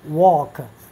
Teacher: We do not pronounce L in walk, in talk. So that is also a kind of idgham.